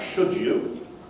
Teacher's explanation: So if you have something like should you, that's a reciprocal assimilation there, two-way assimilation, you have both place and manner operating there. So the D and the Y change both in terms of place and manner of articulation.